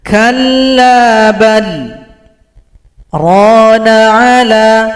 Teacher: Di sini ada sakta di atas kata bal. Sakta ini artinya kita berhenti sejenak, tahan nafas, kira-kira 2 ketukan baru sambung. Itu namanya sakta.